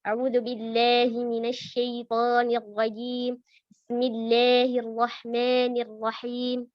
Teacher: memiringkan harakat seperti bacaan imalah tapi bukan pada tempatnya